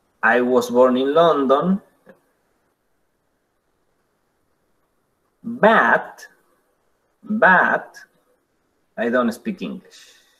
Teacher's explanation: I was born in London viene con un tono que cae, un falling, pero en el momento de decir but, hacemos un rising tone, un fall rise.